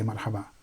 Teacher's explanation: the last vowel providing there's no other word after it the last vowel is not pronounced